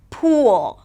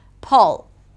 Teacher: pool - longer, the tongue is higher; pull - shorter, the tongue is lower. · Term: Tense 'u'